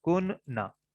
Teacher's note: جب اس طرح کی کننا آئے گی صورت، اس طرح کی صورت آئے گی تو دو نون اکٹھے ہو جائیں گے، اور پہلا نون ساکن ہو اور دوسرا نون جو ہے زبر والا ہو تو پہلا نون دوسرے نون کے اندر مرج ہو جائے گا. تو یہ بن جائے گا کننا.